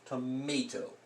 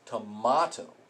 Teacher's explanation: the a isn't making an ah sound it's going a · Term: long a